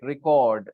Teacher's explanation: Stress on the second part, cord part.